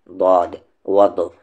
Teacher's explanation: وَضْرِبْ، یہ ضاد ہے، اسے یاد رکھے، نہ یہ پوری طریقے سے دا ساؤنڈ آئے گا اس میں اور نہ ہی پوری طریقے سے دا ساؤنڈ آئے گا، اسے ہم پڑھیں گے ضاد، اور یہ ہیوی لیٹرز میں سے ہے۔ زبان کے کنارے کو اوپر کے جو دانت ہیں جسے ہم مولر کہتے ہیں، موٹے موٹے جو دانت ہیں، زبان کے کنارے کو وہاں پر ٹچ کرنے سے اس کا مخرج نکلے گا، اس کا ایگزٹ ہے ضاد وض۔